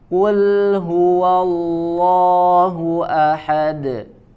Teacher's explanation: Untuk huruf kaf maka lebih kuat ya, dikuatkan bunyi atau bacaan huruf kafnya kul. Kemudian ada huruf lam sukun ya, lam sukunnya tipis.